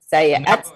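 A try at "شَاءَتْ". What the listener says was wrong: Syaat aja, nggak pakai ya. Tetap aja. Syaat.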